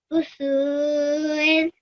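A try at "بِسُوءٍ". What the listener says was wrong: There's kasra below ba. Bisu'in.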